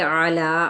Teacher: عین کو وسط حلق سے ادا کرنا ہے اور لا پہ کھڑا زبر ہے، 1 الف کے برابر کھینچیں گے۔